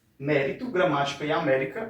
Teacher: a sílaba tônica, ela aparece na antepenúltima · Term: proparoxítonas